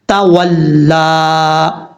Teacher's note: دو نقطوں والا تا جو ہے اس کو بھاری ساؤنڈ کے فل ماؤتھ نہیں پڑھنا, اس کو باریک پڑھنا ہے